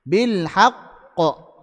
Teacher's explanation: qalqalah yang paling besar wakaf pada huruf qalqalah yang bertasydid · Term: qalqalah akbar